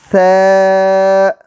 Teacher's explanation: زبان کی نوک جب اوپر والے دو دانتوں کے سرے سے لگے تو ث ادا ہوتا ہے